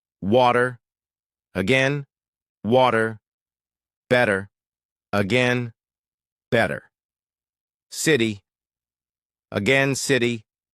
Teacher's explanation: One important one is the flap t. In American English, when t comes between two vowels, it often sounds like a soft d.